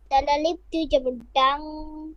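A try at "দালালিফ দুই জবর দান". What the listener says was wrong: এখানে দাং হবে না, দান। দালালিফ দুই জবর দান।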